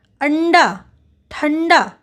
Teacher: ट ठ ड ढ के पहले आने वाले अनुस्वार का उच्चारण कभी-कभी न के समान होता है